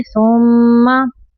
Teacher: میم مشدد پہ غنہ کریں گے